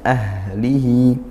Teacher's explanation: Ahlihi, haknya hati-hati, tunaikan sifatnya, yaitu dia hamas ya, didesiskan suaranya, juga dihilangkan suara dan didesiskan nafasnya. Ahlihi. Kemudian hi mad silah qasirah.